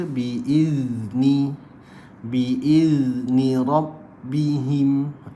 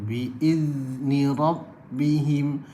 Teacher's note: Itulah cara dia mengeluarkan huruf zal tu tak kena. Sebab huruf zal ni dia bersifat dengan rakhawah, perlu dialirkan. Bila dialirkan, cara dia biizni rabbihim, gitu.